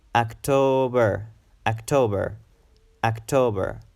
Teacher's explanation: October October October it's a three syllable word October and the stress is in the second syllable and it should be long · the stress is in the second syllable and it should be long. It should be pronounced a bit longer.